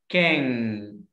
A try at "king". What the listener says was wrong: Stop air in your mouth. Don't push air out in your mouth. Stop air in this word.